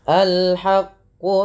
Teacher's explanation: Al-haqqu, ya perlu kita pahami kalau yang seperti ini dibaca a ya di awalnya, dan di sini ada alif lam qamariyah dibaca dengan jelas suara lamnya